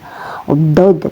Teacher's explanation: Nah, dod begitu, baik bagian kanan maupun kiri ya. Bunyinya keluar dari tepi lidah yang menyentuh bagian dalam gigi seri atas. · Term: huruf dod